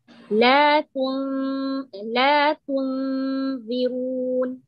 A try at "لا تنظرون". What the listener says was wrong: Now make the ظاء heavy all the way.